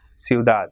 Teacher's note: It has got 2 syllables, ciudad. So as it is not ending in any vowel or N and S, so the last syllable is stressed. So it will be ciudad.